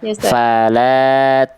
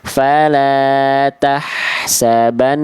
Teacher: Gunahnya itu harusnya dengung dan ditahan dua harakat.